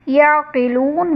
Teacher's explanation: یعقلون میں واو ساکن سے پہلے لام پر پیش، واو مدہ کا قاعدہ، اور حرف مدہ کے بعد عارضی سکون یعنی وقف کی وجہ سے ہم نون کو ساکن کریں گے تو یہاں پر مد عارض کا قاعدہ ہوگا